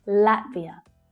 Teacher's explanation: The first syllable is the stressed one.